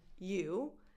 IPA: ju